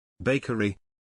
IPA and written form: ˈbeɪ.kər.i (Bakery)